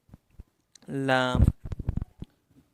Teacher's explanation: lam comes out from the edge of the tongue and the part of the roots of the teeth towards the palate